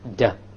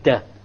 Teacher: you only use the tip. When you say the Arabic Dal, you use the tip along with the upper portion